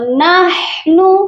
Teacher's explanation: ہا کی آواز درمیان والے حلق سے آئے گی